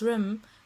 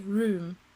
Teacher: the contracting of vowels while speaking in words which actually include a long vowel, such as room, tends to be seen as posher than pronouncing it in the original way, room.